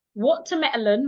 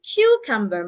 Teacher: My tone goes up. And cucumber, my tone come down. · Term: Intonation